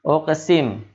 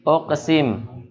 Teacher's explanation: Jadi tidak begitu jelas ya bacaan qalqalahnya. Walaupun memantul harus ada. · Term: qalqalah sughra